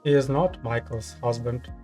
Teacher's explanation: In this instance, I'm stressing a function word because I want to clarify and point out who Michael's partner is.